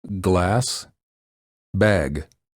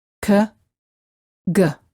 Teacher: the back of the tongue presses up against the back of the mouth and then releases.